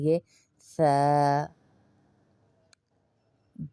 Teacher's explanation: زبان کی ٹپ کو دانتوں کے اندر لائیں گے.